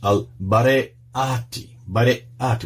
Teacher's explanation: Barayati, with the glottal stop there.